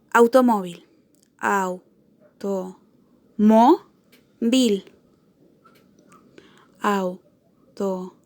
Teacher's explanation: Tiene su acento en la penúltima sílaba. Y es una palabra que termina en L, por lo que es una consonante distinta a N y S, y no es una vocal.